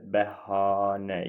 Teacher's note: İkinci hecanın saı uzun tələffüz olunur. Bəli, bəhanə. İkinci hecanımız a-da uzandı.